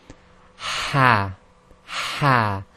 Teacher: it comes from the middle of the throat, and its closest equivalent in English is heart. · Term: throaty ha